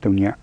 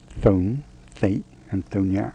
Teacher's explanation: more often it sounds as if it had a t in front of it a bit like the th in henry viii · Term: burmese th sound